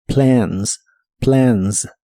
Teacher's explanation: La A de esta palabra se pronuncia con un sonido de inglés que es una combinación entre el sonido E y el sonido A.